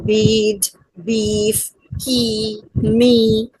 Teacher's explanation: A front wobbles is produced when the highest part of the tongue is at the front of the mouth